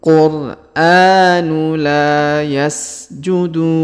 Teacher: huruf la kita panjangkan dua harakat karena terdapat Alif di depannya